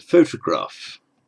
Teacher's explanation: notice the pronunciation of the first o it's long it's the English o d thong sound and the second o